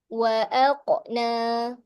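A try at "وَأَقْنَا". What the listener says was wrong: Jangan. Jangan muncung. Wa aaqa. Qa. Qa. Buka aje mulut tu.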